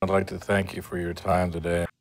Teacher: What actually occurs is that the sides of the tongue, which were high or occluding and closing the air for the D sound, then lowered to allow the air out laterally through the sides to produce the lateral glide L sound. The tongue tip stays in the same place.